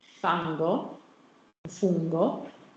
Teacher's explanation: So if I say fango, you do have a velar nasal before g